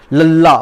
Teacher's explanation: ਜਿਹੜੀ ਜੀਭ ਦੀ ਜਿਹੜੀ ਨੋਕ ਹੁੰਦੀ ਹੈ ਦੰਦ ਪਠਾਰਾਂ ਦੇ ਨਾਲ ਸਪਰਸ਼ ਕਰਦੀ ਹੈ। ਉਹ ਲੱਲਾ ਬੋਲ ਕੇ ਦੇਖੋ, ਸਾਡੀ ਜਿਹੜੀ ਜੀਭ ਹੁੰਦੀ ਹੈ ਨਾ ਦੰਦਾਂ ਦੇ ਨਾਲ ਵਿਦਿਆਰਥੀਓ ਜੁੜ ਜਾਂਦੀ ਹੈ। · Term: ਪਾਸੇਦਾਰ